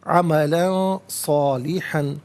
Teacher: عملا صالحا، عملاً میں لام پر 2 زبر کی تنوین ہے، اس کے بعد صاد حرف اخفا ہے تو تنوین کو اخفا کے ساتھ پڑھا جائے گا